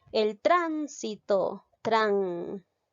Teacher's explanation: Lleva la mayor fuerza de voz en la antepenúltima sílaba. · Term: esdrújula